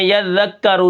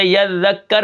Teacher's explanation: میں نے آخر میں یذکرو سے یذکر پڑھا، یعنی اس کو میں نے ساکن کر دیا۔ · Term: وقف بالاسکان